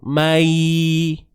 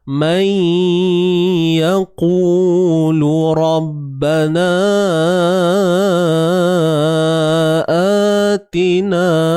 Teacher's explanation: Jadi bunyi mai tu jangan kosong. Mai. Ni, pastikan bunyi ke hidung kita ni.